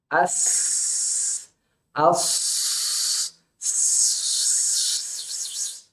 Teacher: Maka kita lihat tidak ada hambatan, suara bisa mengalir sampai keluar dengan tanpa hambatan, maka sifat sofir muncul, bunyi yang tajam. As, as. Nah, itu bunyi sofir namanya, bunyi tajam.